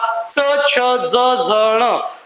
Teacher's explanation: च, छ, ज, झ, ण यांचा उच्चार होताना जिभेचा जो स्पर्श आहे तो मुखातील तालू या भागाला होतो.